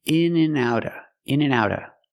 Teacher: We hear the word and pronounced in and outa, outa. The T in out changes to a fast D because it's between vowels.